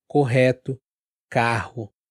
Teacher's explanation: essas palavras tem o r que não é na garganta ele é mais embaixo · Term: R duplo